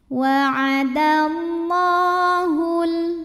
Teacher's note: Allah mad tabi'i muqaddar karena ada baris fathah tegak di atas huruf lam. Cara membacanya dipanjangkan lamnya 2 harokat.